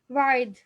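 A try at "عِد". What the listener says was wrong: आइद, वा नहीं, आइद। वा तो क्या है, कनेक्टर है।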